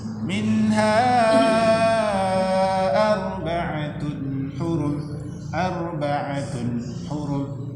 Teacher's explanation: Mad asli berjumpa dengan alif itu menjadi mad jaiz 4 sampai 5 harokat.